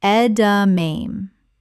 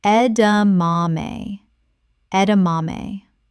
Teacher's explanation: Four syllables with the stress on the third.